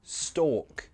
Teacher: Pronunciation, you don't pronounce the L. Stalk, it's like walk.